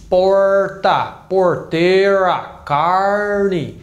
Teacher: é aquele r bem puxado bem caipira esse é o som do r em inglês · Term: R do caipira